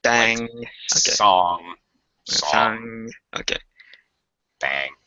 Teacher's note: you don't hear the G sound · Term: NG sound